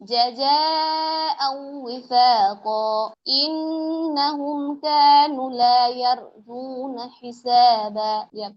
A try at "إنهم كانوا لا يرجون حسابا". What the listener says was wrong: হ্যাঁ, নুনের টান হবে, টানটা দেওয়া হয়নি। ইন্নাহুম কানু।